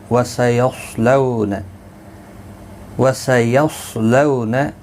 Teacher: صاد حروف مستعلیہ ہے، پر پڑھا جائے گا، اس کو ہلانا نہیں